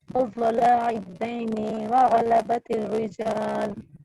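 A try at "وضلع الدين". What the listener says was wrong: جی وضلع نہیں کریں گے، لا کو لمبا نہیں کریں گے، لام کو.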